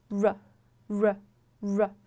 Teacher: 看一下现在的英音当中呢，有一个简化为翘舌的趋势，所以说就是刚刚跟大家说的，如果你发不出来这个▁dark▁l，你就简单的发一个翘舌，问题也不大。总之，你一定要有这个翘舌的动作。然后接着我们看到这样一个齿龈静音是什么意思呢？它是你的舌头会靠近你的齿龈，但是大家看到这张图，有个从下面上去这样一个动作，但是你的舌头它从始至终它其实是不接触任何地方，不靠近任何地方，它在你的口腔当中处于一个中空的状态的，所以说不要把它对应到中文里面的拼音这个，比如说我们举一个例子，这个玫瑰这个单词， 这个音它是发▁r，它其实在口腔里不接触任何地方